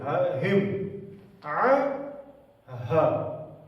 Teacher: اس گول ہے کو پڑھیں گے سینے سے